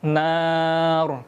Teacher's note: Nun bertasydid atau dinamakan dengan gunnah asliyah, maka dibaca dan ditahan selama 3 harokat.